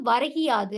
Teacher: சொல்லோட இறுதியில் இருக்கிற அந்த கு என்னும் எழுத்து கி என ஒலிக்கிறது அதுவும் முழுமையாக ஒரு மாத்திரை அளவில் ஒலிக்காமல் அரை மாத்திரை அளவாக குறைந்து ஒலிக்கிறது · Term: குற்றியல் இகரம்